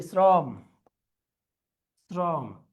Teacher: শ্রমে কি আমরা তালব্যস উচ্চারণ করি না দন্তস উচ্চারণ করি দন্তস উচ্চারণ করি